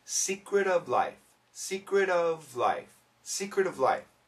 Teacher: sometimes we're going to get rid of the F sound or the V sound but actually you can hear it when Kramer says it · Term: connect